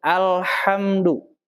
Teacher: jangan dilepas itu lamnya ketika mau masuk ke huruf ha jadi langsung alhamdu kalau dilepas dia akan menimbulkan bunyi qqolah alhamdu